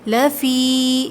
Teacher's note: یا ساکن سے پہلے زیر ہے، یا مدہ ہے، 2 کاؤنٹس کھینچیں گے